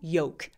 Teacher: 아예 묵음이 돼요. walk 할 때 L 발음 아예 안 하는 것처럼 walk처럼 yolk, L 발음 안 합니다.